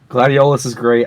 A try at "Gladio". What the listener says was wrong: Why the fuck do you keep calling Gladio? It's Gladio. The Olus is silent. This is Gladio.